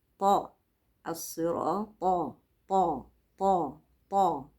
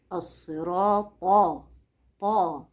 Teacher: التاء مرققة بينما الطاء مفخمة ومطبقة لازقة في السقف